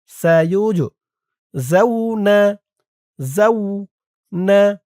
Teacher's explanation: এই জিম কলকলার হরফ ধাক্কা দিয়ে পড়তে হবে